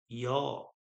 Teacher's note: sound तो आ रहा है लेकिन मुंह में कहीं कोई टच नहीं हो रहा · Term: अंतस्थ